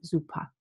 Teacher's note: whenever a word ends in ER, I don't say the R, but the schwa and the R sort of melt together into something called a deep schwa, and it sounds like super.